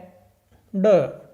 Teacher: तो ड का हमारा उच्चारण स्थान हो जाएगा मूर्धा